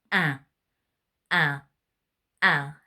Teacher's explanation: So you're going to get your two fingers like this, and you're going to pinch your nose, and you're going to say, ah. Can you hear that really nasal sound?